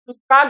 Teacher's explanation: बहुत कम वायु प्रवाह से बोला जाता है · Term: अल्प प्राण